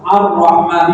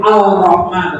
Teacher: Nah, makanya disebut idgham syamsiyah karena al-nya tidak dibaca jelas, tapi diidghamkan di huruf syamsiyah yang berada di depannya.